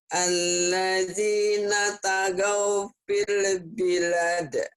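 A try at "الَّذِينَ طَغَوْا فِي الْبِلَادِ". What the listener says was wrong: Togo, ulang, bukan ta tapi to.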